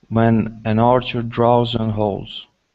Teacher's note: instead of saying drows, it's only an ah sound.